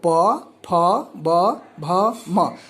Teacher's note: फिर अगला वर्ग है पवर्ग। इसका उच्चारण ओठ से होता है। इनको उच्चारण करने में दोनों ओठ परस्पर सटते हैं